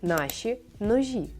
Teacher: А ще в нашій мові є м'які ш та ж